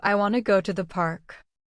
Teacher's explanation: Pay attention to how the words link where the stress falls park and the falling tone at the end